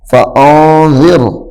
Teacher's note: حالانکہ قاعدہ یہ ہے کہ را سے پہلے اگر زیر ہو تو را کو باریک پڑھیں گے، لیکن یہاں پہ را کے نیچے زیر ہے لیکن را موٹا پڑھا جا رہا ہے۔ اس کی وجہ یہ کہ ہم نے یہاں پہ وقف کیا ہے، ہم رکے ہیں، ٹھہر گئے ہیں، را باریک ہو گیا، را باریک تھا تو موٹا ہو گیا ہے، را باریک تھا اور را موٹا ہو گیا ہے۔